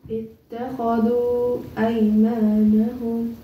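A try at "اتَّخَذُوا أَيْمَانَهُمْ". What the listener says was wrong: You have to continue. You're not continuing. Do it again.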